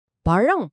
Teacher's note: நாக்கு அண்ணத்தை தொடாமல் அதை மிகவும் மிருதுவா வருட வேண்டும். பழம் அப்படின்னு சொல்லும்போது நாக்கு எப்படி வருடுகிறதுன்னு கவனித்து பாருங்க.